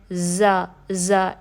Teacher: زا میں سیٹی واضح کرنی ہے، زا ایسی سیٹی، ٹھیک ہے؟